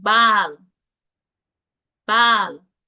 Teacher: instead of the short a sound we have a long a sound